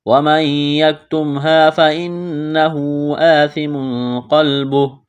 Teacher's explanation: نون ساکن کے بعد یا ہے، یا کے اوپر تشدید ہے تو یہاں غنہ کریں گے، آواز ناک میں چھپائیں گے